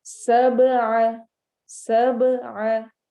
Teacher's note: सब में बा की आवाज हिलेगी, आइन हुरूफ हलकी में से।